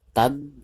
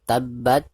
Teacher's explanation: dari huruf ta itu langsung ditekankan ke huruf ba. Karena huruf ba di sini adalah huruf musyaddad atau huruf yang bertasdid.